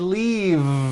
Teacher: I should have said leave with a voiced V sound.